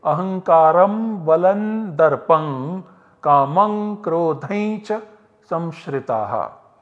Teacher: this anuswara is optionally pronounced as ma, which is parasavarna of this ba. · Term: Parasavarna Sandhi